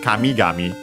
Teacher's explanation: actually accent on the last syllable of the first part